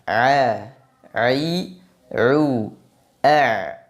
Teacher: pada pengucapan huruf Ain tidak ada nafas udara atau angin yang mengalir a a u a kemudian timbul pertanyaan Apakah yang mengalir pada · Kenapa huruf ain disifati dengan jahr? Karena pada pengucapan huruf ain tidak ada nafas, udara atau angin yang mengalir.